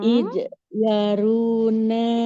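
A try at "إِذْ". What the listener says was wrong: Iz, bukan ij ya.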